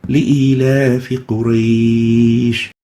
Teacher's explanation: if we pause on Quraysh, then we extend it, we lengthen it for 2 to 4 to 6 units. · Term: Leen mad